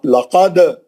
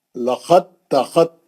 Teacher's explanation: दाल ता के अंदर चली गई और ता मुशद्द बन गई